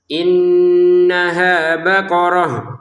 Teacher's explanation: Karena ini baqaratan dibaca baqarah kalau kita berhenti. Baqaratun dibaca baqarah juga kalau kita berhenti menjadi huruf ha.